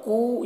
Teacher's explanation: یہاں پر واو مدہ ہے، اسے 1 الف کے برابر کھینچیں گے۔